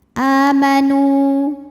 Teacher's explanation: Karena wau ini wau mad, wau sukun. Wau sukun didahului dhammah, maka panjang dua harakat. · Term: mad thobi'i